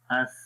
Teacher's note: नरमी के साथ इन हुरूफ को, इस हर्फ को पढ़ेंगे और आवाज़ जो है वो रखावत में होता क्या है कि आवाज़ मखरज में जारी रहती है, बंद नहीं होती।